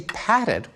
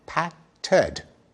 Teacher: when we say padded we stick in a vowel Pat Ted showing that the same suffix ed can be readjusted